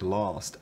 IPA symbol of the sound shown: ɑ